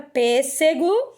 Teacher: a gente percebe que pêssego está acentuada na antepenúltima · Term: proparoxítonas